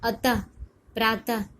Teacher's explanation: जब हम लोग अतः शब्द बोलते हैं और प्रातः बोलते हैं तो उसमें विसर्ग लगता है। जब हम लोग उच्चारण करेंगे अतः, तो उसमें ह की ध्वनि लास्ट में सुनाई देती है ना। इसको, इस चिन्ह को हम लोग विसर्ग बोलते हैं।